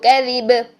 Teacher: با کو ہم نے ہلانا ہے ساکن حالت میں جب ہم اس کو حرکت کے بغیر پڑھیں گے. ٹھیک ہے، تو کیذب.